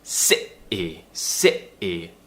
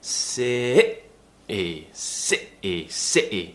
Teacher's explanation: we're creating some tension in our throat, and we're cutting off the sound before the T. So sit-e, sit-e. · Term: glottal T